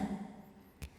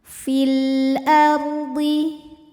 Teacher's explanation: Kemudian ada hukum alif lam yang dinamakan dengan alif lam qamariyah sebab ada alif lam yang menghadapi huruf qamariyah yaitu hamzah. Cara bacanya, lam dibaca dengan jelas atau disebut dengan idhar ya. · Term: idhar qamari